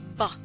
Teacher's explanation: the consonant sounds letter b the sound is ba the consonant b is formed by softly pressing the lips together before passing air through the mouth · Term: voice speech sound